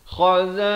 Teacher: Kalau qaf di pangkal lidah, qaf ini di pangkal lidah, kha ni di hujung kerongkong